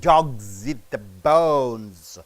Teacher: G is a voice consonant, so it has to be pronounced as Z.